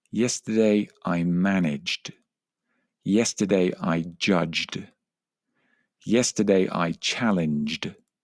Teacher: Whenever you have a verb that ends in g, the ed d is just pronounced duh. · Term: d sound